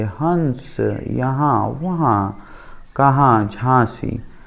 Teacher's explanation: जब स्वर बिना किसी अवरोध के नासिक से उच्चरित हो तब ये स्वर अनुनासिक कहलाते हैं।